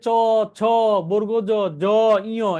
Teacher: এগুলো উচ্চারণ করার সময় এই তালুতে জিহ্বাকে হিট করে, আঘাত করে, এগুলোকে বলা হয় তালব্য